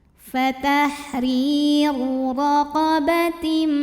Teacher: Huruf ra dibunyikan secara tafkhim karena barisnya dhammah, maka dibaca ra-nya tebal